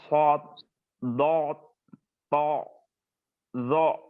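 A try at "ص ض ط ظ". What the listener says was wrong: Tapi bod, so jangan ditelan, bod jangan ditelan, po jangan ditelan. Jadi kalau so ya s o so naikkan so.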